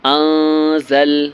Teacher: یہاں پر نون ساکن کے بعد زا ہے، زا حرف اخفا ہے، اس لیے یہاں پر اخفا کرنا ہے